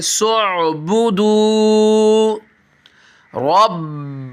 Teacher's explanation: सीन को आइन के साथ डायरेक्ट मिलाएंगे